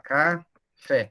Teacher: Bom, a sílaba tônica está no fé, que é a última, então ele é um oxítona.